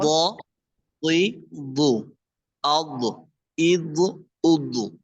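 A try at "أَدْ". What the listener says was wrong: একটু খেয়াল করতে হবে, ওই যে জজম অবস্থা এটা কলকলা হয়ে যাচ্ছে, আপনার বাকিটা সুন্দর ছিল, জজম অবস্থায় খেয়াল করতে হবে, ধরে রাখতে হবে।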